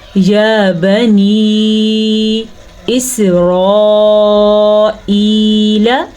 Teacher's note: آگے نون زیر یا ساکن مد نی، تو یہ جو مد آپ کو نظر آ رہی ہے یہ تقریباً ہم نے 2.5 سے 3 الفات کے برابر کرنی ہے · را کو پر پڑھنا ہے، را کے اوپر زبر کی وجہ سے · را کے بعد الف مدہ ہے، اور الف مدہ پہ جو مد آپ کو نظر آ رہی ہے اس کی مقدار تقریباً 5 حرکات عربیہ یا 5 الفات کے برابر ہے۔ تقریباً ہم اس کو 4 سیکنڈ تک لمبا کریں گے۔